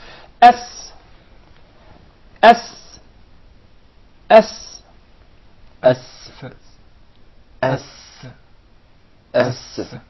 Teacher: But in the case of the Sin, you keep it inside. The Sin is articulated from the tip of the tongue in the palates of the two front top incisors at a point just above the two front lower incisors.